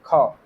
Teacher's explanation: ख जो है ये अघोष महाप्राण व्यंजन है